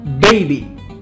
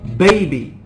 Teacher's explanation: If I say a b sound like baby, the paper doesn't move, or only moves a little bit. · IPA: /b/